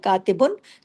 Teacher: ना आवाज नाक में जाएगी, ना इख्फा होगा, ना उन्ना होगा, कुछ भी नहीं, इसको कहते हैं इजहार हल्की।